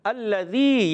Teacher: تو الذی, حمزہ کو الف کو زبر دیں گے, الذی ہو جائے گا, اور لام زبر والا ہے، مشدد بھی ہے، ذرا رک کر ادا کریں گے، لام کی زبر کو کھینچنا نہیں۔